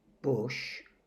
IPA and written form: bʊʃ (bush)